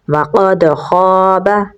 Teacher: قاف کو پر یعنی موٹا پڑھیں گے اور دال کے ساتھ ملائیں گے کیونکہ دال کے اوپر جزم ہے، دال حروف قلقلہ میں سے ہے تو یہاں پر ہم قلقلہ کریں گے لیکن کمزور قلقلہ ہوگا۔ خا کو پر یعنی موٹا پڑھیں گے، آگے الف مدہ ہے تو لمبا پڑھیں گے تو پڑھا جائے گا وَقَدْ خَابَ۔